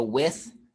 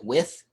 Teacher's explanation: You can tell it's voiceless. There's nothing behind it. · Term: TH sound